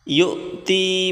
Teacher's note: یہاں پر حمزہ ہے، اس کو جھٹکا دے کر پڑھیں،